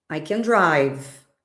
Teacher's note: when uh I I have an affirmative sentence, I don't stress can. · If if you if you pay close attention to how I said it, I emphasized drive a little bit more. I can dance.